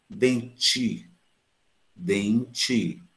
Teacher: Olha o em nasal, olha o i nasal, mas olha o t, dente. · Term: a africada